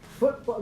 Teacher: the T in football gets either turned into a glottal stop, or the release is turned into a glottal stop. In which case, no audible release can be heard because the glottis is closed.